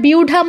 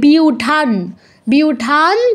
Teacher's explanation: ধ দন্তন্য হচ্ছে ত বর্গের অনুনাসিক্য ধ্বনি তার মানে অনুস্বারের জায়গায় আমাদের দন্তন্য হসন্ত উচ্চারণ করতে হবে